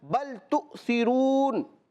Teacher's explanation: حمزہ ساکنہ کو جھٹکا دے کر پڑھتے ہیں